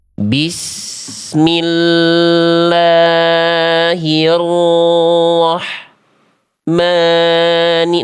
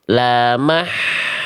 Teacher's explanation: sifat H kecil bukan tertahan suara, tertahan nafas ya. Oke, jadi contohnya harus dialirkan sekali lagi. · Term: H kecil sukun